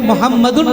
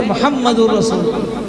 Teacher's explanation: یہ تنوین یعنی نون جو ہے ساکن بدل جائے گا را سے، اور را کو را میں مدغم کر دیں گے، ملا دیں گے، اور اس کو پڑھیں گے محمد الرسول۔